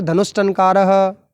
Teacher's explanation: धनु धन टनकार है, विसर्ग के बाद में ट आ रहा है, ट मूर्धन्य वर्ण है, तो विसर्ग बन गया मूर्धन्य स में परिवर्तित होकर